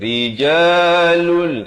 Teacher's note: Ra jadi nipis di sini.